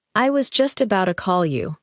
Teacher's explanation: In relaxed speech, about to may sound like about a.